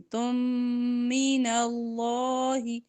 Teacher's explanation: تا کی دو پیش کو میم کے ساتھ ملا کر ادغام کریں گے